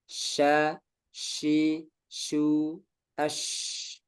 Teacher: Jadi shin ini menyebar udaranya di seluruh mulut ketika mengucapkan huruf. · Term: tafasyi